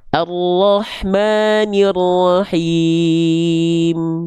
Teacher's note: Ada imam membaca surah al-Fatihah di akhir ayat dibaca gunah arrahmanirrahim. Mim sukun itu ada gunahnya, tapi kadarnya naqis, kadarnya tidak sempurna. Jadi, enggak ditahan.